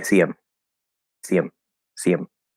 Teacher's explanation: we have some connection going on the H is disappearing